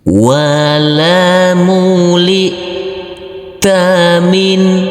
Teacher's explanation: Huruf nun sukun yang bertemu dengan huruf H harus kita baca terang atau jelas untuk huruf nunnya. Yang dibaca terang di sini dibaca jelas yaitu huruf nunnya, karena bertemu dengan huruf H yaitu bacaan idhar halqi.